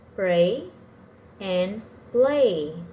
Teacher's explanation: both of them are made with air passing through their mouth around the sides like a liquid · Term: liquid consonants